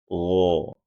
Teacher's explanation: gho dibunyikan dengan jarr. Tidak boleh ada suara nafas yang terdengar.